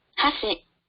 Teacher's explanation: This word has an accent on the first mora. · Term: pitch accent